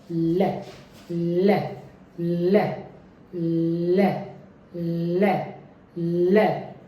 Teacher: Light L में मेरा टंग का आगे वाला हिस्सा मेरे दांतों के ऊपर वाले एल्वेला पर जाके टच होगा. टिप मेरी टंग की वो टच होगी और फिर वहाँ से हटेगी, वहाँ से रिमूव होगी, और जैसे ही वो रिमूव होगी साउंड प्रोड्यूस की जाएगी. · हवा ब्लॉक नहीं होती, कंप्लीट ब्लॉक नहीं फॉर्म किया जाता, क्योंकि ये अप्रॉक्सीमेंट साउंड हैं. तो टंग टिप टचेस द एल्वेलर पहली, और the sides of the tongue are free. तो दूसरी चीज, टंग्स की साइड फ्री है, मेरी टंग की साइड फ्री है. · इस तरह की साउंड को वॉइस लैटरल अप्रॉक्सीमेंट कहा जाता है. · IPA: /l/